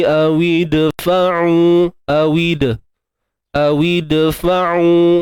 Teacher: maka disebut sebagai qalqalah sughra, lantunan yang kecil ataupun lantunan yang lemah